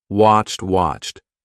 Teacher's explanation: d but it's not a du it's a t watched watched when you have a CH and an ed it's going to be CHT · When you have a CH and an ED, it's going to be CHT. Okay, and make sure you don't say washed. · People forget the ED on the end. Sometimes people do it like watch D, do it with a D, but it's not a duh, it's a T.